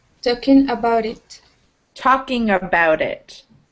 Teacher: about kind of drops down rather than up